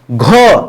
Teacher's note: घ जो है दोस्तों ये महाप्राण है और घ अघोष भी नहीं है। एक्चुअली में जो घ है दोस्तों दो चीज़ याद रखिए।